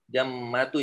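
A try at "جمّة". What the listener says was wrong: Ya, bertanwin tapi.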